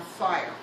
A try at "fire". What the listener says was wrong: Fire. Fire's with an F, not a TH.